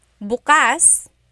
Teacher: If you say bukas, the emphasis is on the second syllable. That means open.